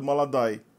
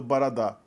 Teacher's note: Outra característica do russo é que justamente as vogais átonas passam a ter uma pronúncia bastante diferente das vogais tônicas. Uma vogal como O, por exemplo, fora da sílaba tônica em russo é pronunciada como A. Por isso que a gente viu que o que é escrito molodói é pronunciado maladai.